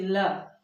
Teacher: ल बोलने में जीभ पीछे जाके मूर्धा का स्पर्श करती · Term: पार्श्व व्यंजन